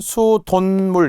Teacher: 수돗물은 수돈물 이렇게 발음이 니은으로 나겠죠. 수도가 한자예요. 한자어 고유어가 만나 니은이 됐어요. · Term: 니은 발음